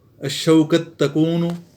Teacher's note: تا کا تا پہ ادغام ہو رہا ہے